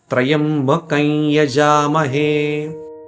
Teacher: The dot has been replaced by the sound of the following letter with the nasal Anunasika.